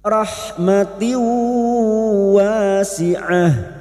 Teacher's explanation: Masuk dengan mendengung, masuk pada huruf berikutnya yaitu huruf waw dan mendengung selama 3 harokat. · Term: idgham bigunah